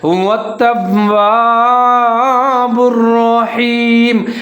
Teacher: با اور را کو ملا کے پڑھیں گے، مضبوطی کے ساتھ پڑھیں گے، ادغام کریں گے اور را کو موٹا پڑھیں گے